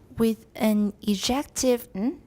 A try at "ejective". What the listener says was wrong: Why are you saying je? Are you taking French?